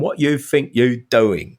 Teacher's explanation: glottis is closing and stopping the air off